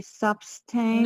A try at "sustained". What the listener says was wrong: No, not sustained. you're eating the words.